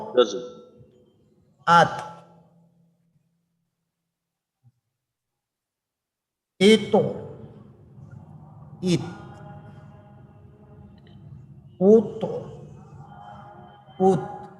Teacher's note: ইত ইত উত উত আচ্ছা তাই কিন্তু বাতাসটাও আবার রাখতে হবে তা যেহেতু হামসের হরফ জজমের শেষে একটু বাতাস বের করে দিতে হবে